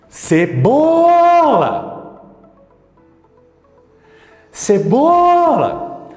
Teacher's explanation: quando você chama de longe a única sílaba que pode se esticar de forma correta é o BO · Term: sílaba tônica